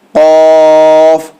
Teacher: قوف تھوڑا سا ڈیپ، یعنی جہاں سے خو نکلتا ہے اسی کے سے نیچے تھوڑا ڈیپ سے آپ کو نکالنا ہے حلق سے، قوف، ٹھیک ہے۔